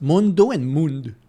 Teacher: They don't pronounce the O in Portuguese.